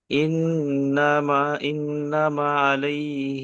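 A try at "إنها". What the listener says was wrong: না, ইন্না মা নয়, এটা ইন্না ইন্নাহা। ইন্নাহা আলাইহিম মুসাদা।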